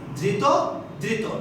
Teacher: আমরা আগেই পড়েছিলাম এই শব্দটি কিন্তু একটা বিশেষণ, বিশেষণযুক্ত শব্দে কিন্তু শেষ প্রত্যয় যে রয়েছে ত প্রত্যয় রয়েছে। ত প্রত্যয় যুক্ত এবং ইত প্রত্যয় যুক্ত বিশেষণের শেষে যে অ থাকবে সেই অটি কেমন উচ্চারণ হবে, সংবৃত উচ্চারণ হয়ে যাবে, অর্থাৎ উ এর মতো হয়ে যাবে। এই জন্যই ধৃত এটার উচ্চারণ হবে ধৃত, অর্থাৎ এই ত এর শেষে যে অ আছে এই অটা সংবৃত হয়ে যাবে, ধৃত ধৃত।